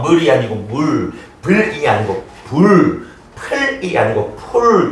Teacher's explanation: 원순모음화 지워버렸네. 미음, 비읍, 피읍 플러스 으, 그치? 근데 요 으가 원순인 우로 바뀌어서